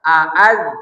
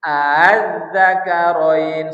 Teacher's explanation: Seharusnya kan kita baca aaz seharusnya ya. Tapi karena ini riwayat Hafs Thoriq Syatibiyah, maka hamzah keduanya ditashil. Az-zakarain 1 2 3.